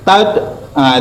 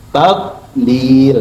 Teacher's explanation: lidah kita tuh nempel di langit atas dan jangan cepat-cepat ditarik sebelum ibu mau nyebut huruf lam. Kalau ibu langsung turuni tad ah itu pasti mantul.